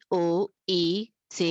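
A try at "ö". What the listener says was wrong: ओ नहीं है, अ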